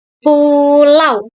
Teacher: diucapkan sebagai satu kesatuan bunyi, bukan dua bunyi secara terpisah. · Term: diftong